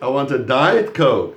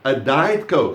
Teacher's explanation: so you stress the word diet so it's not any coke it's diet it's not the non-diet